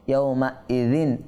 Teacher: তানবিনের পর আইন আসছে, হরফে হলকি থেকে একটি হরফ আসছে, তার মানে এখানে আমরা ইজহার করব, গুন্না করব না